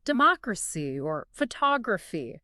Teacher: stressing the third syllable from the end